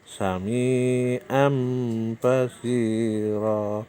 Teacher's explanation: tanwin ketemu ba, langsung dimasukkan ke ba. Bacanya menjadi sami am basiro. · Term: Iklab